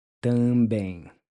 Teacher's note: the T is pronounced with the tip of the tongue pressed against the back side of the front teeth.